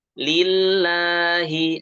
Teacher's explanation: lafzul jalalah ini dibaca 2 harokat ya, jangan lebih, jangan kurang. Walaupun kalau kita dapati di Rosem Usmani itu tulisannya itu hanya fathah saja ya, tapi ini harus dibaca 2 harokat.